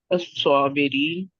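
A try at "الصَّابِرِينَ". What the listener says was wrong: स्वाबिरीन, नून भी पड़े ना।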